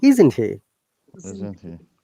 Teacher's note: when you're saying isn't he our tone should go up it's a question remember isn't it that part is question part